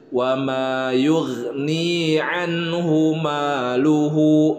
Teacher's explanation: anhu dan nun sukun bertemu dengan huruf ha, hukum bacaannya izhar, dibaca jelas.